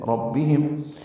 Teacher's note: ربہم میں را پر پڑھیں گے، میم ساکن پہ اظہار شفوی ہے